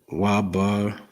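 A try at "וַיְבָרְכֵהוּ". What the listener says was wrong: Waya. Oh, this is Ba. You forgot the ya. Waya, Ba.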